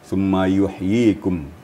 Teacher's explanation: I-nya agak kepanjang sedikit, ya. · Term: tanda panjang